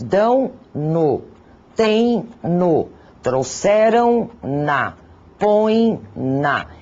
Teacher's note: ditongo nasal, aquele pronunciado um pouco pela boca, um pouco pelo nariz